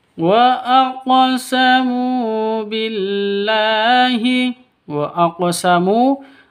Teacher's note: Wa aqsamu Qaf itu hurufnya qalqalah. Karena di sini qafnya sukun berarti sudah memenuhi syarat untuk disebut dengan qalqalah. Begitu. Harus dipantulkan cara bacanya.